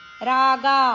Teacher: ಗ ದೀರ್ಘ ಅಕ್ಷರ ಗ ಅಕ್ಷರದ ಮೇಲೆ ಆಘಾತ ಇದೆ